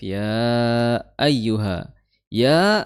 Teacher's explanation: makhrajnya adalah di tengah lidah bertemu dengan langit-langit atas. Ya seperti y dalam bahasa Indonesia. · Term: huruf ya